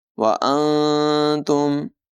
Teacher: یہاں نون ساکن میں اخفا ہوگا